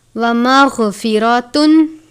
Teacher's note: غین کو بھی پر پڑھتے ہیں، غین بھی حروف مستعلیہ میں سے ہے، وہ حروف جو ہمیشہ اور ہر حالت میں پر یعنی موٹے پڑھے جاتے ہیں۔